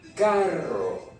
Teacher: Et la partie la plus difficile, comme toujours, mes chers amis, nous avons carro. Il faut rouler les R.